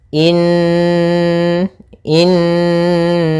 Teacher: tahan dulu suara annya sepanjang dua harakat baru dimasukkan kena in sambil suara nunnya dimasukkan ke rongga hidung kita karena dia gunah